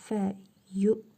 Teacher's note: Ve fə yu kimi vav harfini telaffuz etmirik. Həmzəni isə tutub saxlayırıq.